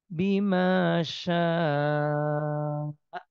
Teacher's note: Nah, kalau berhenti sin fathah atau harokat fathah ketemu alif matobi'i panjang dua harokat. Tapi ketemu hamzah di satu kata, maka di hukum tajwidnya mat wajib muttasil. Panjangnya 5 harokat.